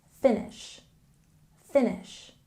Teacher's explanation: here we have a stress on the first syllable, finish, finish.